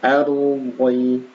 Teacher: Fil ardi, ra-nya diperhatikan di sini sebelum huruf ra sukun yang sebelumnya huruf berharakat fathah maka ra-nya dibaca tebal